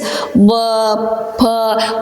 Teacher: Бұны айтып көрің, айтқан уақытыңызда өздеріңіз сезесіз. Б, П қос ерніңіз жабысып, бұл жерден өкпеден шыққан хауа атылып шығады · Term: қос ерінлік